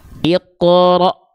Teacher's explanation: Huruf-huruf yang bertemu dengan hamzah sukun itu akan terhenti, akan agak seperti terhentak.